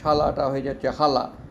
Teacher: শীষ ধ্বনিটা হ ধ্বনিতে রূপান্তরিত হয়